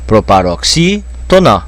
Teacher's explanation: está caindo a tonicidade na terceira sílaba da direita para a esquerda, na antepenúltima, é uma palavra proparoxítona, leva acento nessa sílaba.